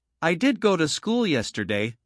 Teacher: Sometimes I stress school to say it was the place I went, not somewhere else.